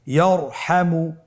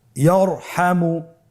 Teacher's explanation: তাহলে ইয়ারহামু, র সাকিন তার পূর্বে জবর আছে, র সাকিন তার পূর্বে যদি জবর থাকে অবশ্যই রকে পোর করে মোটা করে পড়তে হবে